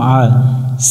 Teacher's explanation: আইন অক্ষর আছে, একটু গলা চেপে উচ্চারণ করবো